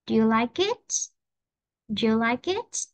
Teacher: ngữ điệu sẽ đi lên nhé.